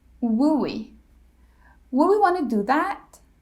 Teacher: the D is dropped if the next word begins with a consonant and of course the letter L is always silent in these